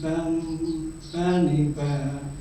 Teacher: Keluar dari bibir, dari kedua bibir bagian dalam